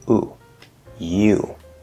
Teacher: this is the y consonant sound plus the u vowel sound